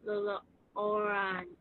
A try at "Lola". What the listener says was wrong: Lola, not Lolo. Lola, right here. Lola. Lola.